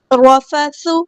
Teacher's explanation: سا کو باریک نرمی سے ادا کرنا ہے، سٹی نہیں آنی چاہیے